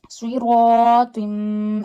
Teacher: And when before alif, if there is a thick voice letter, you read alif also with a thick voice. Because of fatha on ra, we are reading ra with a thick voice. So because of ra, we will read alif also with a thick voice. · Read swad, ra, alif, twa with a thick voice. Swad and twa are mustaliya letters.